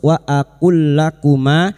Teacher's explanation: Wa aqul lakuma, ya tidak perlu ditahan ya, jangan dibaca wa aqul lakuma, jangan dibaca seperti itu. Lam sukun masuk pada huruf lam berikutnya tanpa ditahan, tanpa mendengung, hanya masuk wa aqul lakuma. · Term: idgham mithlain